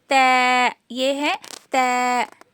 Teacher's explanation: जुबान की जो ये कोनी होती है ऊपर के दांतों की जड़ में लगाने से त अदा होता है